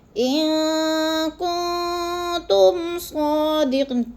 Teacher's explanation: ان کنتم صادقین، تم میں جو ہے اظہار شفی، میم ساکن کے بعد صاد آ گیا تو ادھر اظہار شفی ہے، غنہ نہیں کریں گے۔